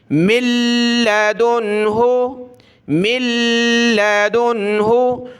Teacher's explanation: یہاں بھی ہم نے ناک میں آواز نہیں پیدا کرنی, نون بالکل ختم کر دیا جائے گا, میم کو لام کے ساتھ ملا دیا جائے گا, یعنی اس کو کہتے ہیں نون مدغم ہو گیا, مل گیا, اندر چھپ گیا, ٹھیک ہے.